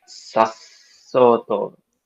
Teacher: the glottal stop here is in the middle of the word